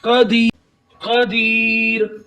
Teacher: कदीर, ये देखिए हमने रा को साकिन कर दिया और इसकी जो तनवीन थी उसको हमने खत्म कर दिया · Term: रा साकिन